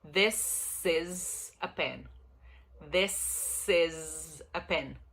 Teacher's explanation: O is do verbo to be, aí é com Z. Mas o this é com S.